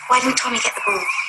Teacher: And also on get, she drops the T sound.